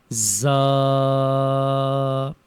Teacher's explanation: زا کے اوپر اچھی طرح سے سیٹی کی آواز آنی چاہیے.